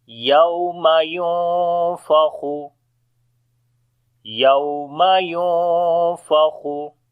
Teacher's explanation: after the nun sakin the next letter is fa. We make ikhfa here, which is the light ikhfa.